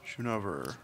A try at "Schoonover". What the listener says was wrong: No, it's Schoonover with a K sound, like the word school.